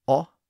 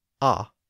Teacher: The only real difference was the shape of the lips. The lips were rounded slightly when making the short O sound, but they were not rounded when making the short A sound.